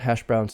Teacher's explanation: browns and of course hash has more stress compound hash browns so hash has more stress than browns hash browns and voiced the s becomes voiced on browns also